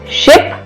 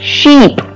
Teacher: Here we have the pair of words that have one different sound. We have the words like ship that has short I sound and sheep that has long I sound.